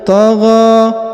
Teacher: huruf gha dipanjangkan 2 harokat karena di atasnya terdapat tanda alif kecil dan juga di depannya terdapat tanda alif bengkok atau alif maksurah.